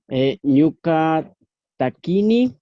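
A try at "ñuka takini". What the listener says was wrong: Muy bien.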